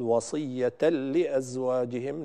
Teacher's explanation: وصية لأزواجهم متاع، وصية لي، البعض يبالغ في زمن اللام هنا وهي لام مشددة بسبب الإدغام فيقول وصية لأزواجهم، وهذا خطأ شائع، لا ينبغي زيادة الزمن عند الإدغام بغير غنة في اللام عند اللام أو الراء، فنقول وصية لأزواجهم، نوضح تشديد اللام ولكن دون زيادة في الزمن